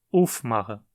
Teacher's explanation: Dizemos aufmachen e não aufmachen. O acento cai no prefixo